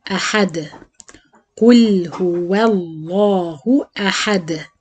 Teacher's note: دال ساكنة ومقلقلة عند الوقف. أحد.